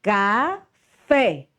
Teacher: Fé é a sílaba mais forte